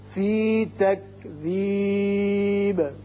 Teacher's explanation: وقت کی صورت میں با ساکن ہو جائے گا اور اس کی صفت قلقلہ ادا ہوگی